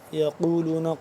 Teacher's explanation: قاف کو موٹا کر کے پڑھیں گے